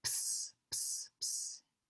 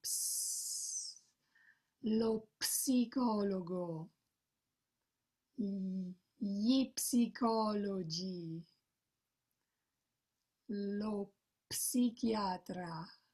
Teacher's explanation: These are Greek words practically, and Italians say ps, ps, ps. In English, we don't say the P, but in Italian we do. So practice this ps, as if your tire is losing air.